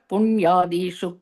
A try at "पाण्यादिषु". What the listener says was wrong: Panya Dishu. You said Punya, Panya Dishu Kvachit. Poor, okay, it should be Panya Dishu. Pani Adishu. Not Punya. It's Panya Dishu Kvachit.